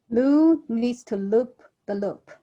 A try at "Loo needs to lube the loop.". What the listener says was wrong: Yeah, so your lube, L-U-B-E, sounded like loop. Hold out that lube. Loo needs to lube the loop.